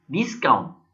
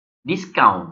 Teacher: setelah dia stresnya berubah dari i ke u · stress pada i di sini, ketika dia berubah menjadi verb dan stresnya itu terdapat pada u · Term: stress change